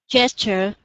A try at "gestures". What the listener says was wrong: Yeah, remember your S here, huh? Gestures with an S. So, ers. Yeah, gestures.